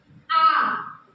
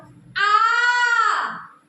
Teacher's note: दीर्घ स्वर जिसको बोलने में ह्रस्व की अपेक्षा थोड़ा सा ज्यादा समय लगे अर्थात दो मात्रा का समय लगे उसे हम दीर्घ स्वर कहेंगे